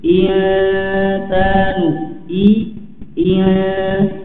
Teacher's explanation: Kemudian bertemu dengan sin, sin memiliki sifat istifal, ya, tipis, maka ikhfanya juga tipis, ya, insanu, ya. Dan jangan sampai terdengar vokal e, ya, eng, eng, ya, tapi perjelas pada harokat kasroh i